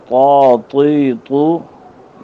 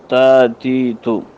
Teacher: زبان کی نوک جب اوپر کے اگلے 2 دانتوں کی جڑ سے لگے، ان سے یہ حروف ادا ہوتے ہیں